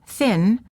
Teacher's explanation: for the N as in thin, the tip of the tongue touches the gum ridge just behind the teeth